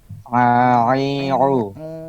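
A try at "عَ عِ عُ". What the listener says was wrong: Masih ke hidung itu Kang. A. A. Nah, I. Terus dilatih untuk tidak hidung.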